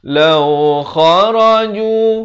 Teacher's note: lau kha, di hujung kerongkong, kharaju, 2 harakat